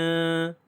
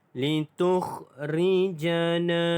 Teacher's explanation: Na dibaca dengan panjang 2 harakat kerana mad asli huruf alif